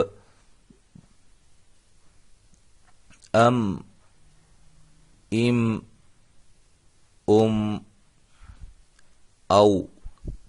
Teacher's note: میم دونوں ہونٹوں کی خشکی والے حصے سے